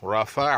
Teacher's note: را موٹا، فا بھی پتلا، عین بھی پتلا، رفع، اور آئین کو نرمی سے ادا کرنا پڑے گا۔